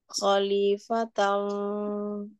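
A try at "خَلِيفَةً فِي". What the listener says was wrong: pokoknya lidahnya jangan langsung ketang, jangan kedengung. Jangan kedengung, tapi dia samar. Samar, ifanya tipis. Khalifatan fi.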